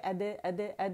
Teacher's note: دال کے لیے دیکھیں میں نے قلقلہ کیا، اد اد اد، اور دال کے مخرج پہ میں گئی ہوں صو ادا کرنے کے بعد.